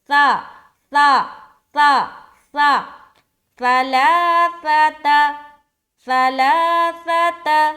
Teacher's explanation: زبان کی نوک کو ثنایا علیا کے کنارے پر لگانا ہے. سا بغیر سیٹی کے ادا کریں گے